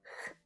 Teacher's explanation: So Argentinians and Spanish speakers, notice that in English, we use the /dʒ/ consonant sound not the /h/ sound.